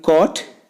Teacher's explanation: RP vowel number 7 is O as in coat. The back of the tongue is at a position between open and half open position. The lips are rounded. O is a back between open and half open, rounded vowel.